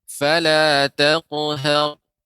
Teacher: Qafnya juga tebal, qafnya tebal ya, qalqalah, tapi pada huruf isti'la.